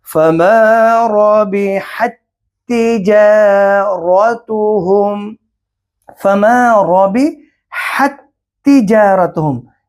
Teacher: ساکن تا کو، ساکن حرف کو تشدید والے حرف کے اندر داخل کریں گے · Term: ادغام مثلین